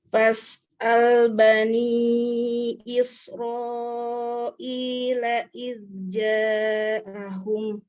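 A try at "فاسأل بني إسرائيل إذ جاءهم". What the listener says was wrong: Ya, kurang panjang izja'ahum.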